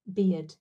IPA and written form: bɪjəd (bid)